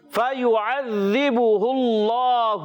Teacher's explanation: اللہ کے لام سے پہلے زبر اور پیش آئے تو اس میں جلالت اللہ پاک کا لام موٹا ہو جاتا ہے